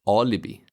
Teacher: Both vowels I in this word are short because they are unstressed.